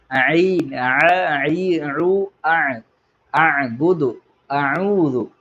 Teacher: നാവിന്റെ തൊണ്ടയുടെ മധ്യഭാഗത്തുനിന്നാണ് ഐൻ എന്നുള്ള അക്ഷരം പുറപ്പെടുന്നത്